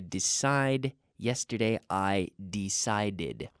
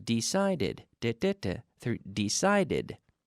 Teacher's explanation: this is a regular verb which receives, with that D sound ending, receives an extra syllable in the past